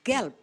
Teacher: The ending B in a word in German is pronounced as P.